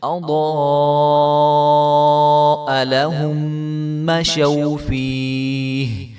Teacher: یہ جو بڑے والی مد ہوتی ہے اس کو 5 سے 6 الف کے برابر لمبا کرتے ہیں